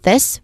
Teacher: Now it starts with this, which is clearly using a voice th sound and a short e vowel sound and a hissing at the end